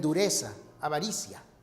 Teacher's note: surge la z un sonido interdental